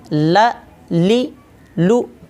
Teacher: नाक में बिल्कुल आवाज़ नहीं जानी चाहिए। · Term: लाम